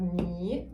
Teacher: This is descending, rising, just like 我